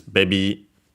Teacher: accented on the first syllable just like in English. So yeah, high and everything else low.